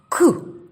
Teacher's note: Дійсно, він приголосний, твердий, глухий. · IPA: [к]